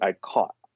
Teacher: They might still say I'm sleeping on a cot, but they don't aspirate. They don't pronounce that last T. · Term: elision